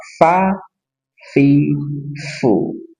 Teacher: huruf fa ujung gigi di atas bertemu dengan perut bibir bagian bawah.